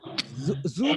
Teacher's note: उसके ऊपर दो फिंगर ऐसे लें, ये वाली, और इनको इसके ऊपर रखें और फिर बोलें ज स। ऐसे जू में आपको देखें कि एक वाइब्रेशन सी फील हो रही है, उससे हम कहेंगे वॉइस साउंड